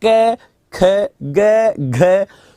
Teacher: क बोलने में हवा कम निकली ख में ज्यादा निकली ग में कम निकली घ में ज्यादा निकली